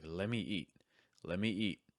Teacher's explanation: it's normally going to sound like lemmy with a stress on eat.